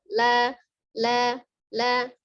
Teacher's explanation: Huruf lam ya, keluar dari ujung lidah yang bertemu dengan langit-langit di depannya